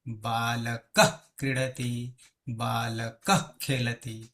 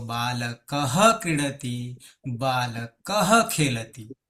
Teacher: અડધો હ થઈ ગયો અને અડધો હ થવાને કારણે જીહવામૂલ્ય બની ગયો